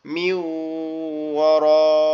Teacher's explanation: আর এখানে কিন্তু গুণনা হবে কারণ নুন সাকিন আছে এজন্য